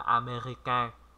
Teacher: âm mũi ở trong đó, âm an